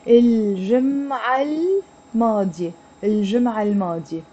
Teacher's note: No, it becomes, this T becomes silent and it becomes الجمعة الماضية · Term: T مربوطة